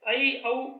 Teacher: संयुक्त स्वर में जीभ एक स्वर से दूसरे स्वर की ओर चलती है, जैसे ऐ, औ संयुक्त स्वर है।